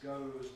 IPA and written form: gəʊz (goes)